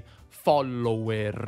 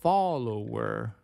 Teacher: In inglese, però, la /l/ è una sola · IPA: /ˈfɒləʊəʳ/